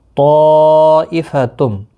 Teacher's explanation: طا یہاں پر مد متصل ہے، 4 الف کی مقدار کے برابر کھینچ کر پڑھیں گے